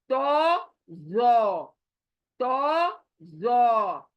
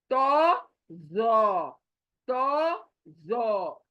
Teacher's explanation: ये तो, जो, तो, जो। ओ देखिए, अपना मुंह पूरा गोल हो रहा है, होंठ गोल हो रहे हैं। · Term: मोटा